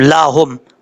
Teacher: لام کے بعد جو ہا ہے یہ بھاری ساؤنڈ کے ساتھ پڑھا جائے گا، اس کو باریک پڑھنے کی ضرورت نہیں ہے